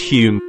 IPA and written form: hjuːm (Hume)